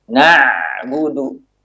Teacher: Tapi kalau ain, ada suara yang mengalir namun sedikit.